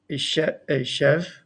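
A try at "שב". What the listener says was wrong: A sev. A sev. With an S, not a SH. A sev.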